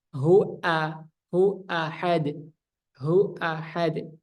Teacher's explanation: Hamzah itu yang pertama terpotong napasnya dan suaranya jadi jelas · suaranya hamzahnya jelas dia syiddah dan juga dia tidak mengalirkan suara